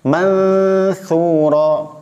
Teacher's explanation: Jadi antara dua gigi seri seperti tergigit lidahnya.